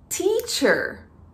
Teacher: É que quando se pronuncia a letra T, muitos também falam de true T, que seria o T verdadeiro, a gente precisa soltar um pouco de ar ao pronunciar o T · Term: aspirated T